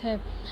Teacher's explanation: तालव्य महाप्राणघोष वर्ण का उदाहरण